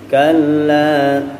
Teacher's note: cukup ditarik saja lamnya, lam tasydid, la-nya 2 harokat